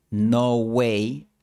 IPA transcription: 'no 'wej